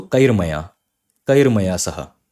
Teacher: Again, Ma belongs to Mradu Vyanjan. So instead of visarga, you will have a Ra. So Kahi plus Maya, this visarga will go and a Ra will come.